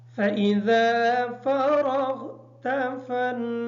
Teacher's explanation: فراغت کی جو را ہے اس را کو پر پڑھیں گے۔ فنصب کی جو نون ہے اس نون پر غنہ ہوگا اور صاد کو کلیئر ادا کریں گے تاکہ سین ادا نہ ہو۔